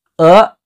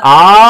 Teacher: ಮೊದಲನೇ ಅಕ್ಷರ ಸ್ವಲ್ಪ ಸ್ವಲ್ಪ ಉಸಿರನ್ನ ಇಟ್ಕೊಂಡು ಹೇಳ್ತೀರಿ ಎರಡನೇದು ಆ ಅಂತ ಎಳೆದು ಹೇಳ್ತೀರಿ